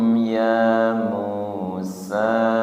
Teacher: Ya musa tidak kepanjangan dua harakat. Dua harakat ya.